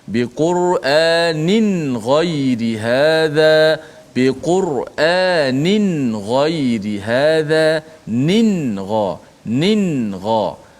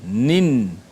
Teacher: Tanwin nun itu dimatikan betul-betul. Nin. Tak boleh nin ghai. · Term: ikhfa